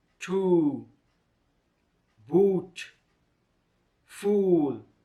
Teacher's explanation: ooh is a single and long vowel sound the mouth is narrow open the tongue position is at the back side of the mouth the example words are two boot fool the mouth is made